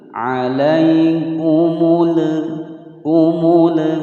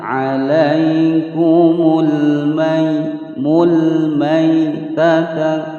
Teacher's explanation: Alaikumul, alaikumul, alai ya sukun sebelumnya fathah tidak dibaca panjang ya, hukum bacaan lin. Alaikumul, ada al-qamariyah dibaca dengan jelas, hindari membaca memantul atau diidghamkan.